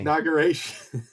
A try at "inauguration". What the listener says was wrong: Why are you throwing that extra G in there? It's not eggnog. It's not. eggnoguration. No, it's inauguration. Like Inauguration.